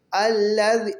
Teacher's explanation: الذی، اب ذال میں سیٹی کی ساؤنڈ نہیں آنی چاہیے، یہ دال کے بعد جو ذال ہے وہ ذال ہے، اس ذال میں سیٹی کی ساؤنڈ نہیں آتی